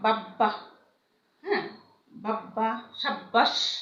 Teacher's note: ব বা ম এর সাথে যদি ব ফলা যুক্ত হয় তবে সে ব এর উচ্চারণ অবিকৃত থাকে। যেমন দেখো বাব্বা, হ্যাঁ, বাব্বা, সাব্বাস, হ্যাঁ, এগুলো কিন্তু ব তোমার উচ্চারিত হয়, হুবহু উচ্চারিত হয়।